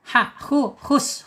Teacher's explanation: awas jangan terlalu naik, jangan khus ya. Kalau khus dipakai kha dia. Hus ya, hus. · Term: tenggorokan yang tengah